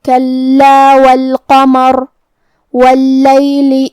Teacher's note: را کے نیچے زیر ہے تو را کا حکم ہوگا ترقیق. پھر ہم را کو پتلی آواز میں پڑھیں گے